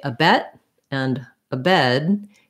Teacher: both of them have the same kind of stopping sound for the tongue where i lift it and i don't release it